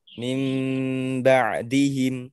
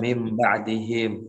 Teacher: mengganti nun sakinah ketika bertemu dengan ba diganti menjadi mim dengan gunnah